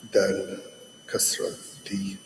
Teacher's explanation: the tip of the tongue is going to be at the base of the front two teeth. And then don't let too much air gather in that space between the tongue and the top of your mouth. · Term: dal